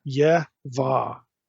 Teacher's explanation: It has the E vowel and the final A vowel. In other words, there is no O vowel.